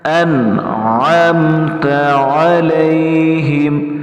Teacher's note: نون کے اوپر ہم نے زبر نہیں پڑھنا، جزم پڑھنا ہے، ساکن پڑھنا ہے، حمزے کے ساتھ ملانا ہے۔